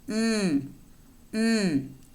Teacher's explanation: out nasal cavity not the oral cavity and we have first the bilabial nasal voiced sound